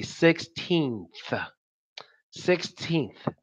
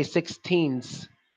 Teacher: when you're saying 16th, you have to stick your tongue out at the end because you can't say 16s. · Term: th sound